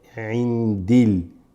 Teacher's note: So the alif lams, when they drop, they just make a L sound